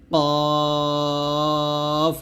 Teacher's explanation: জিহ্বার গোড়া তার বরাবর উপরে তালুর সঙ্গে লাগিয়ে এই কফ উচ্চারণ করতে হবে মোটা করে